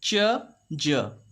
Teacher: Affricates, we have 2 affricates, ch, j. Complete closure, slow release.